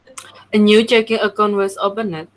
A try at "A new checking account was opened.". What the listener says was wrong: Bacanya open aja ya, jangan open tapi ada penekanan D, open gitu.